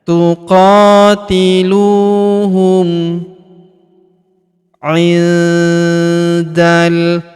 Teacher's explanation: huruf nun sukun bertemu huruf da, maka nun sukunnya melebur ke huruf da, kita baca dengung dan samar. Dengungnya kita tahan 2-3 harokat.